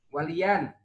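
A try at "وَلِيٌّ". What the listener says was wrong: Waliyun. Yun. Oh, enggak ada alifnya kok. Enggak ada alifnya. Karena kalau isim, kalau masuk kan tambah yan pakai alif.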